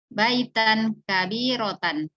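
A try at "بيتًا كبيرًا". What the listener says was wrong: اتق الله، ليس هناك كبيرة.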